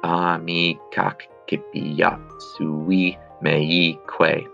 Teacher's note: the I in amici elides with the A in accipiat. So what that is really doing is taking the ki and the ak and smooshing them both into one syllable.